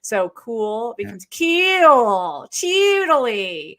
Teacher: it's caricature but they do follow it for example the back the fronting of the back vowel ooh · the fronting of the back vowel oo. So cool becomes keel, cheedly. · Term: California Vowel Shift